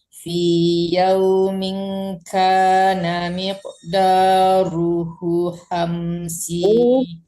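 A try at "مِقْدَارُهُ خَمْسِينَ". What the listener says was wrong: U-nya juga panjang, dhamma kebalik, panjang.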